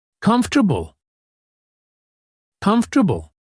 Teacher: We say comf, T-R, bull. The or sound gets compressed. Comf, T-A-R, bull.